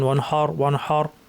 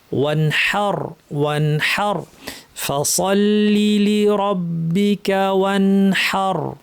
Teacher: হাটা সুন্দরভাবে ফ্যাস ফ্যাসে হায়ের আওয়াজটা করতে হবে।